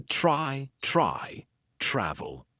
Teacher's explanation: the consonant blend TR is going to be more of the CH sound combined with R